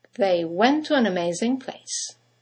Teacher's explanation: you have the semi-vowel W that connects the vowels to and an to each other. · 2 words, one ending with a T, the next one starting with a T, they run into each other